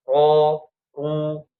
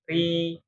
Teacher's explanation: Dan ro ini nanti punya sifat sebenarnya dia punya sifatnya itu istifal ya cuman dia punya sifat tebal juga bukan tebal ya kadang dia dimasukkan ke dalam sifat ee tafkhim kadang tarkik ya. Jadi ketika ro fathah sama ro domah itu dibacanya tebal ya ro ru. Tapi kalau ro kasrah tipis ri ya tebal tipisnya itu dikaitkan dengan pangkal lidahnya. · Jadi ketika ro fathah sama ro dhammah itu dibacanya tebal ya.